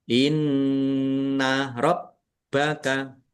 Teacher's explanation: nun tasdid bacaan dibaca ghunah atau mendengung ditahan biar tampak mendengungnya. Bnya ada tasdidnya dibaca dobel ditekan dan ditahan biar tampak dobelnya. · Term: gunnah